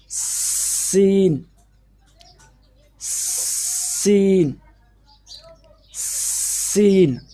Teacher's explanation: جب سین کو ادا کریں گے تو سٹی کی آواز بھی نکلے گی. یہ جو دانتوں کے خلیے ہیں ان کے اندر سے ہوا خارج ہوگی. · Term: سٹی والا سین